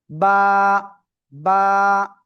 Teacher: এই যে দুই ঠোঁট, দুই ঠোঁটের ভিজা অংশ থেকে এই অক্ষরটা উচ্চারিত হয়।